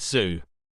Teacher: Z, voiced coronal sibilant